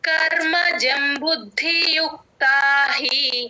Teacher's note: కర్మజం బుద్ధి యుక్తాహి కర్మజం బుద్ధి మహాప్రాణం ద కింద ద వత్తు మహాప్రాణం బు కి ద ని కలుపుకొని బుద్ధి మహాప్రాణం పడేటట్టు చెప్పాలి